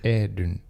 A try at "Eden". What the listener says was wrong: Eden. Yeah, like a the.